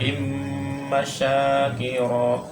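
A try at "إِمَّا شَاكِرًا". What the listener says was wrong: sekarang ma-nya kurang panjang. Dua-duanya ya.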